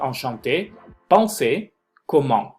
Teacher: recuerden que la EN en una misma sílaba se va a pronunciar como una ON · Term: ON nasal